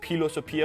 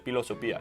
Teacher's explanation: some Romans would have pronounced it as philosophia with the H sound, but others would have just said philosophia.